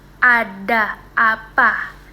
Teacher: bunyi A terdengar kuat dan terbuka sepenuhnya. Ada apa ya kan lebih terdengar kuat dan terbuka ee mulutnya itu lebih terbuka. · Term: vokal rendah bawah tengah